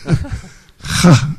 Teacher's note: It's a more guttural ha, right? From deeper. Из глубины как бы ха.